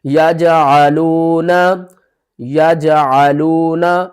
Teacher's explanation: جیم بھی حروف قلقلہ میں سے ہے تو اس کے اوپر بھی ہم کیا کریں گے قلقلہ کریں گے یعنی کہ اس کو تھوڑا سا ہلا کر پڑھیں گے